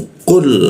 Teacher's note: Nah, lalu qu huruf qu itu siku ee lidah ya kita naikkan sehingga qu itu tidak ada hembusan udaranya ya. Qu masuk ke dalam qul seperti itu tebal ya.